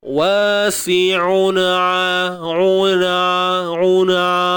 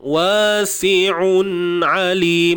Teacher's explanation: Wallahu huwa, huruf ha baris depan, wa, 2 harakat ni alif mat sebelumnya, baris atas si'un, sin baris bawah, si'un, tanwin bertemu ain, un'a, walaupun duduknya point yang sama, tapi pisahkan makhraj tu satu-satu supaya nampak ada 2 huruf ain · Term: Izhar halqi